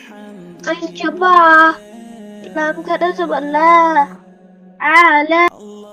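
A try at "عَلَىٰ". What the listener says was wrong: আতে লং হবে না, জবর জের পেশ হরকত, হরকত তাড়াতাড়ি পড়তে হয় না, আ হবে আলা।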